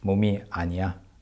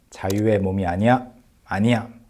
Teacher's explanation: In more natural intonation, you say 몸이 아니야, like with more emphasis at the end. 자유의 몸이 아니야, 아니야, like that.